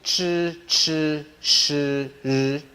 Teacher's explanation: the next group called retroflex, where the tongue is curled back